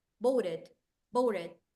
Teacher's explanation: the T sounds like an R